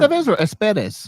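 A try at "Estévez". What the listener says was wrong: EST, like it's Estevez. It's a V.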